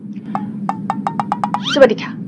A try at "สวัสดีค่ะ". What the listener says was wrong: Why so fast?